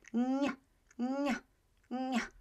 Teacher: my tongue goes close to the palate, touches the palate almost, and it becomes ny, ny, ny. Right?